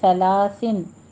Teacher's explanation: نرمی سے پڑھنا ہے، اس میں سیٹی کی آواز نہیں لانی ورنہ سلاسا سین بن جائے گا